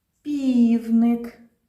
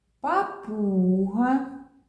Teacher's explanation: як ми вимовляємо звук п міцно стиснувши губки так і повітряний струм розриває перешкоду